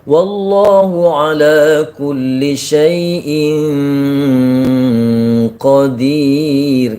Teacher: Jadi masuk ke nun mati ketemu qaf, seperti dengung jadinya. Nah, ya bukan gunnah tapi idgham, masuk dia.